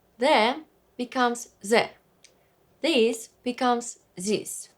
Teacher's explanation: voiced TH such as The There will be replaced with Z